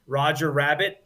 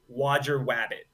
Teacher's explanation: And you get more of an Elmer Fudge type of sound. Roger Rabbit turns into Wodger Wabbit. You get a W substitution.